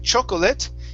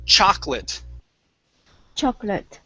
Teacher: this second o we do not pronounce so instead of saying chocolate it's chocolate chocolate very nice very